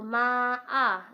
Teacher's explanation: Karena ada mat bertemu dengan hamzah dalam satu kalimat, maka dinamakan dengan mat wajib muttasil yang panjangnya itu 5 harokat.